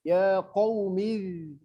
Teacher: Enggak boleh juga zal ini mendesis. Mendesis salah, mati juga salah.